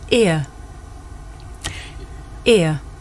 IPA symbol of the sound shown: ɪə